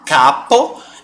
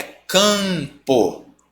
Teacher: dígrafo vocálico mas também a gente chama de Nasal porque justamente ele vai dar nasalidade a essa vogal em vez de você falar capu é Campo trazendo para o nariz